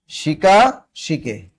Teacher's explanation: প্রথম স্বরধ্বনি ঠিক থাকবে, কিন্তু দ্বিতীয় স্বরধ্বনি কি, লা হয়ে গেল কি, লো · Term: স্বরসঙ্গতি